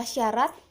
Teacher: bunyi S mati, oral, lamina palatal, dan frikatif